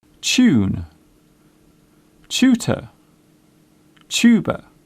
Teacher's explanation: The first part of the word sounds like chair. It is common in British English to pronounce the TU sound as ch.